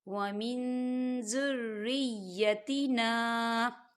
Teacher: زال جو ہے اقفا کا ورڈ ہے تو یہاں پر اقفا ہوگا، ہم نون ساکن کی آواز کو ناک میں چھپائیں گے